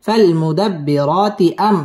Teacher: মিম সাকিনে ইজহারে খাস গুন্নাহ ছাড়া পড়তে হবে